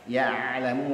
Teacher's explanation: ain punya sifat tawassut, ada mengalir sedikit suara ainnya ya. Lalu muljahra, lamnya itu sukun, tidak boleh dipantulkan dan tidak boleh mati seperti syiddah.